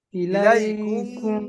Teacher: ইলাই কুম ইলাই ইলাইকুম, ইলাইকুম আমি বলছি ইলাইকুম কুমটা গুণনা করতে হবে তো, একালি পরিমাণ আওয়াজটাকে ইলাই যে টান বলে, টানটা নাকে তুলতে হবে, নাকে তুলে ওটা গুণনা করতে হবে ছুপিয়ে। ইলাইকুম, ইলাইকুম পড়েন।